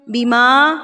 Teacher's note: فَأَنزَلْنَا عَلَى الَّذِينَ ظَلَمُوا رِجْزًا، زم پہ غنہ، زم مِّنَ السَّمَاءِ بِمَا كَانُوا، بِما، دیکھیے میم کیا گیا؟ الف، اور الف سے پہلے کیا ہے؟ زبر ہے، تو اس کو بھی ہم ایک حرکت کے برابر کھینچیں گے۔ کاف الف زبر کا، زبر اور الف آ گیا، اس کو بھی ہم ایک حرکت کے برابر کھینچیں گے۔